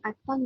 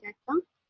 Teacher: bahasa Selangkau tidak menggunakan fonem D untuk menyebut perkataan atang, manakala bahasa Melayu menggunakan fonem D dalam perkataan datang